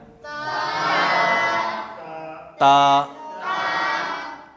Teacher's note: ज़ुबान कहाँ जाएगी? ऊपर के दांत के जड़